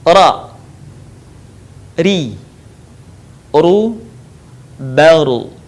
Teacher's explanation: dikeluarkan dengan cara menyentuhkan lidah yang terdepan atau disebut dengan adna lisan, dengan langit-langit bagian depan. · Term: huruf ra